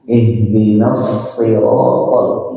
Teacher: tetap pakai ujung lidah ya. Kalau pakai tengah lidah nanti jadi shi.